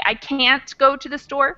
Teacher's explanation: But can't will never get changed to the schwa sound. So if I say I can't go to the store, I'll give the A its full pronunciation. But the T might get cut off, and that's something that is actually, I think, rule number 15.